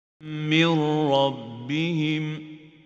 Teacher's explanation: The noon merges into the letter without gunna. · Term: Idgham without gunna